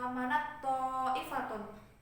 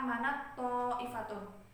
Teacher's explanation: Contohnya juga seperti manat ifatun. Itu kan ada huruf ta sukun bertemu dengan huruf to. Nah, itu tuh meleburnya juga secara sempurna. Jadi hamisnya huruf ta tuh udah hilang, udah ke to semua. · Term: idgham